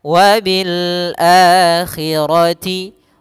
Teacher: ini menandakan a-nya ketemu dengan Alif sehingga panjangnya dua harakat ada fathah ketemu Alif wabil a dua harakat wabil akhirati ro